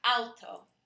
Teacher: as in an automobile in English but in Spanish it's pronounced the Au is pronounced more like o w in Spanish